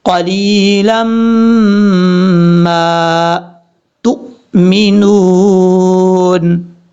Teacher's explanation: لام کے بعد جو یا ہے یہ یا مدہ ہے، اس کو لمبا کریں گے ایک الف کی مقدار